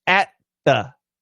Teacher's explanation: It fills up this area at once. And we do the D or the T and the TH at the same time.